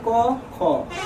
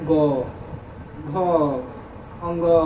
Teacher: क और ख सिंपल सा है क ख इसमें थोड़ा सा भी कुछ भी कंपन उत्पन्न नहीं हो रहा है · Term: अघोष वर्ण